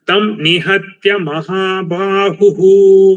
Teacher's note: This ha is Mahaprana, but ba is Alpa Prana. I think because of ha's effect, you are making this also Mahaprana.